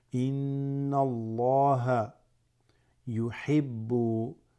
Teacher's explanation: dhamma before the exalted name of Allah, it becomes full mouth, mufakham